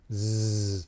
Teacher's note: during the zzz portion, the Z sound, you feel vibration under your fingers